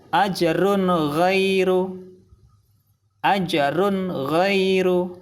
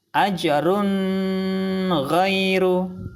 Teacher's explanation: Salah, karena bacaan izhar tidak boleh dengung.